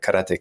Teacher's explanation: in Japanese there's really no stress on any syllable